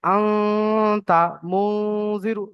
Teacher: শুধুমাত্র নুনের আওয়াজটা নাকের মধ্যে যাবে। হামজার আওয়াজ, তারপরে তার আওয়াজ, তারপরে মিমের আওয়াজ যতগুলো আছে, একটাও নাকের মধ্যে যাবে না। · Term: গুণনা